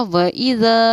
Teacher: الف حروف مدہ ہے اس لیے کہ الف سے پہلے زبر ہے، اس کو تھوڑا کھینچ کر پڑھنا چاہیے